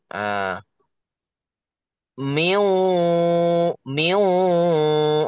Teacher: Jadi dibikin sengau, Miu. di hidung dibikin sengau, di hidung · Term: nakisah